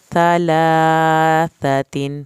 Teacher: ثا کو زبان کی نوک سے پڑھنا ہے